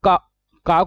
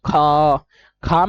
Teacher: क क को उच्चारण करते समय कम धवनी ख ख में हवा ज्यादा निकलेगी